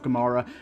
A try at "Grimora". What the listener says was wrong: It's Grimora, not Gimora. No, you said Gimora twice. Saying it like you're saying it like Sodom and Gomorrah.